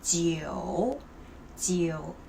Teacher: Even you cannot see the O here, but you still have to pronounce it